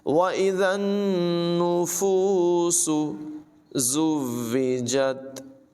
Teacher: ज़ा में सीटी की आवाज़ पैदा करेंगे। ज़ाल और ज़ा में फ़र्क ही ये है कि ज़ाल के अंदर सीटी की आवाज़ पैदा नहीं करते और ज़ा जो है इसमें सीटी की आवाज़ लाजमी पैदा करते हैं।